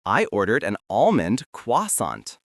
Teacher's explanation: The key is to skip that final T sound.